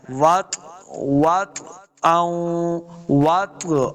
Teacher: ہی اشد وطئا، وطئا، واو کو جب پڑھیں گے دونوں ہونٹ گول کرنے ہیں، واو کو طوا کے ساتھ ملانا ہے، طوا ساکن ہے، اور طوا حروف قلقلہ سے بھی ہے، قاف طوا با جیم دال جو حروف قلقلہ ہیں، تو طوا اب ساکن ہے، حروف قلقلہ سے آ گیا، تو اس کو خوب واضح کرنا ہے